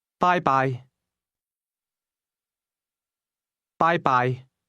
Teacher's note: Did you hear the high and mid-level tones in that word?